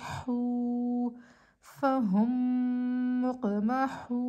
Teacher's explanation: واو مدہ کو بھی ہم حرکتین مقدار ایک الف کے برابر کھینچ کے پڑھتے ہیں